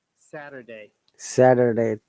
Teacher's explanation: t sounds like d and there is r sound